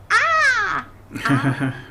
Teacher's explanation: It's not the vowel U or I or E. It's a pure open mouth